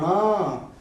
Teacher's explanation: न का नाम लेते ही आवाज कहाँ से निकल के आ रही है भैया, नाक से निकल के आ रही है ये